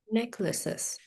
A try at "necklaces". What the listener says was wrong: vẫn lace quá, necklaces.